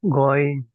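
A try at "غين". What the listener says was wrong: গয়িন এইভাবে বলা যাবে না। কিভাবে বলতে হবে? গয়িন, তিন আলিফ টেনে পড়তে হবে। গয়িনে তিন আলিফ টেনে পড়তে হবে, গয়িন।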